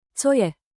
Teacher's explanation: Let the intonation rise on both words. Co je? 2 gentle steps up.